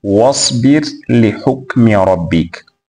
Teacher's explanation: yani ra ambayo ina sakna kwenda katika herufi ya allam katika sehemu zote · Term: idgham